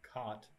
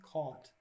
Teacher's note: some speakers have merged the vowel in cot, as in the thing you sleep in, with the vowel in caught, as in something the past tense of catch. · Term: the merger